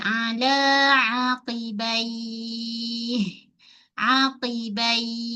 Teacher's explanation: sebab waqaf jadi mad lin kat sini kita baca 2 4 en selalunya kita akan ambil empat